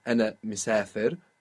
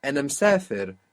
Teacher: So there we had the small I being lost across the word boundaries.